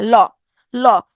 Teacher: ল যখন উচ্চারণ করব তখন ফুসফুস থেকে যে বাতাসটা আসতেছে এটা জিভের 2টা পাশ থেকে বের হয়ে যাচ্ছে। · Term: পার্শ্বিক ধ্বনি